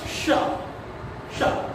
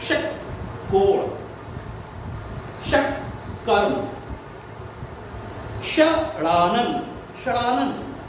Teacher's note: आपकी जीभ तालू से थोड़ा और पीछे जाएगी और पीछे जब जाकर बोला जाएगा तो श, षटकोण, षटकोण है ना। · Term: मूर्धन्य शा